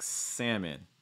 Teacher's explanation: typically that L is going to go silent in North America, I would say.